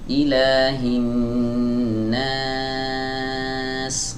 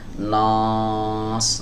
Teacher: berhubung huruf nunnya adalah huruf tipis, maka alifnya ini harus dibaca tipis juga